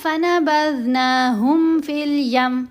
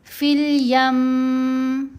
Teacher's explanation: اگر کوئی پڑھے نا فَنَبَذْنَاهُمْ فِي الْيَمِّ تو یہ اس نے غلطی کی کہ اس نے یہ تشدید چھوڑ دی، صرف میم ساکن ہی پڑھی. یہاں ہم نے میم مشدد ہونے کی وجہ سے میم کے اوپر غنہ کرنا ہے